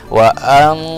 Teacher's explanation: ini adalah bacaan Ikhfa bacanya harus samar